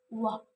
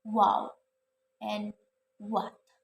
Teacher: Labiovelar sounds wa. This consonant sound is made when the back part of the tongue contacts the soft palate or velum, and lips also come close to each other